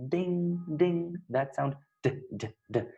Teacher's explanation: is produced in an alveolar place of articulation because our tongue is touching the alveoli